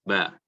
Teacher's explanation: huruf ba itu bibir atas bertemu dengan bibir bawah, maka membunyikan ba.